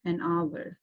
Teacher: H is silent and the word starts with the vowel sound hour. Okay, the sound is A.